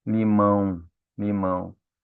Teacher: Parece que a gente sente o nariz abrindo aqui, ó. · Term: ditongo nasal